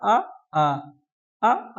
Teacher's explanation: तो कंठ से किसके कौन से स्वर का उच्चारण होता है? आ आ आ का उच्चारण कहाँ से होता है? कंठ से।